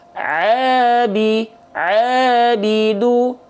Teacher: Ain keluar dari bagian Tengah tenggorokan kita nama istilahnya adalah wastul halqi